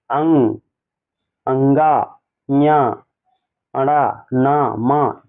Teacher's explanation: हमारी आवाज नाक से भी निकलती है और मुंह से भी निकलती है। ये उच्चारण करते समय हमारी आवाज दोनों स्थानों से निकलती है। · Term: नासिक वर्ण